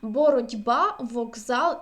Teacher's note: глухі приголосні перед дзвінкими звучать як парні їм дзвінки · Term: Оз віншуються